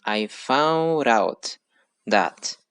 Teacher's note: in this case we have the linking between found and out and that results in i found out that and we have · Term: linking words